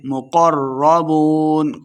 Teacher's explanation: مقربون قاف کو موٹا پڑھنا ہے، را مشدد ہے قاف کو را کے ساتھ ملا کے پڑھیں گے. بون واو مد ہے دو حرکات لمبا کرنا ہے اور آخر پہ ہم نے وقف کر دینا ہے.